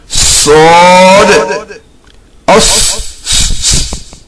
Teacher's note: After sheen, one Sod, which is like seen, but its mouth is closed. Pronounced from the makhraj of seen, that is, the tip of tongue and the upper part of lower incisors. This also gives a whistling sound.